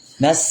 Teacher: Kalau sin itu istifal. Istigfal itu lidahnya turun enggak naik tipis.